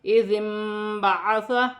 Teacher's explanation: یہاں پر ذال نرمی والا حرف ہے، ذال کو نون کے ساتھ ملا کر پڑھا جائے گا، نون ساکن ہے، نون ساکن کے بعد حرف با آ رہا ہے تو وہاں پر چھوٹی سی میم لکھی ہوئی ہے، نون ساکن کی آواز کو میم سے بدل کر غنّے کے ساتھ ادا کیا جائے گا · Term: اقلاب